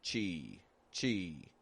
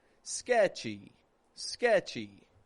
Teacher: chi chi kind of flat just getting this e sound fading away on the end